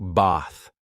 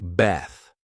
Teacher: In British English, this A is usually pronounced as a long ah sound, like bath.